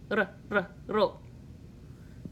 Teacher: you quickly tap the tip of your tongue just behind your top front teeth. Ro. You have to just tap it really quickly, otherwise you go do if you push too hard. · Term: roll the R